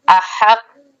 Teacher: تو دو حرفوں کے برابر رکنا پڑتا ہے، تو احق تھوڑی دیر رک لیں گے اور پھر قاف کی آواز کو لوٹائیں گے اگر تشدید ہے حروف قلقلہ پر۔